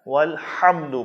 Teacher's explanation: ہا ہے جو حلق کے درمیان سے ادا ہوگا